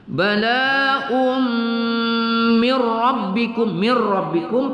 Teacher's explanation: nun sukun bertemu ra idgham bila ghunnah ya, mir rabbikum tidak kita dengungkan